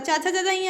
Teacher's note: तालू मीन्स चा फॉर चालू मीन्स तालू, तालू से बोले जाएंगे कौन से, चा वाले जितने भी हैं वो तालू से बोले जाएंगे